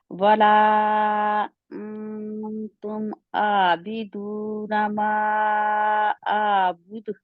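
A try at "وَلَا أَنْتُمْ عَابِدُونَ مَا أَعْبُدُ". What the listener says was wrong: آپ اس میں اپنا منہ تھوڑا سا بند رکھتے ہیں جس کی وجہ سے نون جو ہے تاکہ مخرج کے قریب نہیں جاتا بے شک اخفا ہے ولا انتم اعبد जी, क्योंकि निशान लगाएंगे जहाँ पे आपका इख्फा जो है ना, आप ता के मकसद के करीब नहीं जाते, ठीक है।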